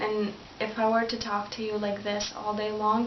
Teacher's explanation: It's very sort of like flat and monotone